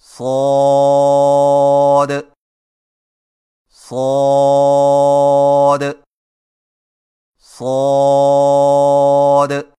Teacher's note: صاد کی ادائیگی میں زبان کی نوک کو ثنایا سفلی کے کناروں سے مضبوطی سے لگا کر اور زبان کے پچھلے حصے کو تالو کی طرف بلند کرتے ہوئے موٹی اور سیٹی جیسی آواز میں پڑھیں، یعنی صاد صاد صاد.